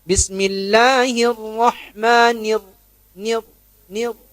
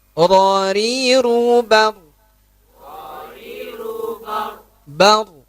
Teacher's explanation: Bergetarnya ujung lidah saat mengucapkan huruf. Ujungnya saja. Bukan semua bagian lidah. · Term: takrir